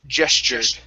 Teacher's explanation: let's switch the uh t to a c h sound and the u r is going to be an e r sound